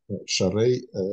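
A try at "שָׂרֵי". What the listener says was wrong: Сарей, сарей, точка стоит слева, поэтому сарей, да.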